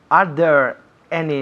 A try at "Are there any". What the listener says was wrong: Are there. Un poco más abierto. There.